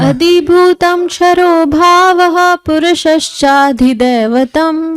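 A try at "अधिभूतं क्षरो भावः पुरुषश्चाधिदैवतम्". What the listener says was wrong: ध्यान दीजिएगा, उच्चारण में छ है, क्षत्रिय वाला, श नहीं। शर मतलब बाण हो जाता है। क्षरो। अधिभूतम क्षरो भावः पुरुषश्चाधिदैवतम्।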